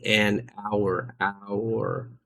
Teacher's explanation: we say an hour because the H is silent, making it start with a vowel sound